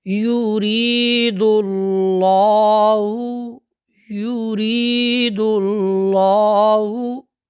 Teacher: یہ لفظ الجلالہ کا جو لام ہے یہ موٹا پڑھا جاتا ہے۔ دیکھیں کیسی آواز موٹی ہو رہی ہے۔